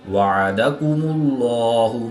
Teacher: اس میں دلالت اللہ عز و جل کے لام سے پہلے حرف پر پیش ہے، تو اس لیے اس لام کو پر یعنی موٹا پڑھیں گے